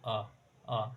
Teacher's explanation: मध्य स्वर या उदासीन स्वर, मतलब जीभ के बीच वाले हिस्से से आवाज आए